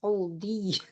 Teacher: Setelah dhad dimasukkan ke huruf ya. Dia idgham bi gunnah jadi harus masuk hidung.